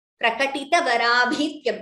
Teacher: Only bha is Mahaprana in this line. Ta is not Mahaprana.